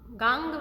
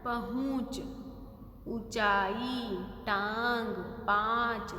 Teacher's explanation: तो गांव, गांग नहीं बोला है, गांव बोला है। तो यहाँ पर न का साउंड नहीं आएगा, इसमें साउंड आएगा आ की ध्वनि का, मतलब क्योंकि मुंह और नाक से वो ध्वनि निकलेगी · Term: अनुनासिक